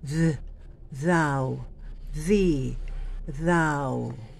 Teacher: Ito po ay hinaharangan natin ang hangin. Zzz. Kaya nagkakaroon ng vibration, nagiging voiced sound po ito. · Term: hard TH